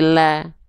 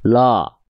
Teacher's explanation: Buka mulut, sedikit senyum. Jadi ketika dibaca jangan sampai dibaca lo, tapi la, ya, buka mulut, sedikit senyum. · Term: vokal A